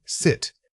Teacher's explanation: Say this word quickly and casually. Notice how the sound is clipped. It doesn't have time to linger. Your jaw should remain fairly open but not wide.